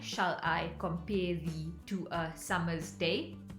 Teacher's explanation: have five units of stressed and unstressed syllables per line so ten syllables per line five are stressed and five are unstressed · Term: iambic pentameter